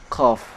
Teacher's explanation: cara membaca huruf qaf tidak boleh disertai keluarnya nafas